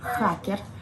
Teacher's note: c'est pas un guttural comme en français. En russe, c'est un R roulé.